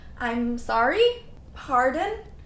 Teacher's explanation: For both of these, I'm sorry and pardon, you should use a rising tone.